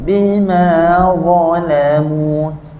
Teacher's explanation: Lam tak nak terpengaruh dengan dha. Dha tebal, lam nipis.